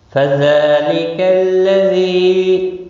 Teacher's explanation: زال کے اوپر کھڑی زبر ہے، ایک الف کے برابر کھینچ کر پڑھیں گے